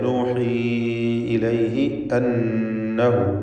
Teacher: നൂൻ മുശദ്ദദയെ മണിക്കണം, ഷദ്ദുള്ള നൂനിനെ മണിക്കുക. അന്നഹു എന്നതിലെ ദ്വമീറിന് മദ്ദുസിലത്ത് സുഗ്റ എന്ന 2 ഹറക്കത്തിൻ്റെ അളവിൽ മാത്രമുള്ള ദീർഘവും നൽകുക.